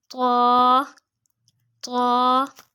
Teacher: اس کا مخرج نوٹ کیجئے، زبان کی نوک اور اوپر کے دانتوں کی جڑ سے